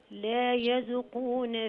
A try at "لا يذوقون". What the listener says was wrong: لا يذوقون لا يذوقون لا لا يذوقون مد الواو شوية يا حاج.